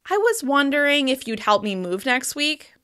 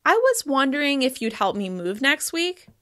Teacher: This shows that I'm not really sure how the other person would respond. We often choose to end these requests with a slight rise at the end instead of a steep fall in order to emphasize that uncertainty. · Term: wavy intonation